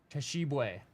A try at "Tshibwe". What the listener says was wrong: Now the T is silent.